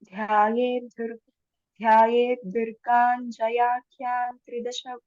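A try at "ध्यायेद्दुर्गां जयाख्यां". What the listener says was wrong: Vakara, Anuswar, not anywhere, anyhow, Nakara will come. Na will come only for Tavarga. Ta, tha, da, dha, da. That's all. Rest everything, we have to watch what it is.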